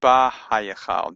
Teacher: You would say ba-ha-hayachal. And if you say it quickly enough, it's kind of ba-hayachal. The hay gets absorbed into the bet.